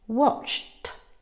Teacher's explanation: The ed ending is pronounced t, watched. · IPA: /t/